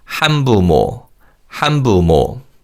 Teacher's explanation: When we say this word, 니은 받침 in han changes to a 미음 sound.